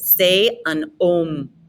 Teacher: H's exist in the French language, but they're never pronounced. They do not pronounce the H sound. So go right to the vowel.